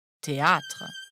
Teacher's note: le rôle de l'accent circonflexe est ici d'allonger le a il faut donc prononcer théâtre en France et notamment à Paris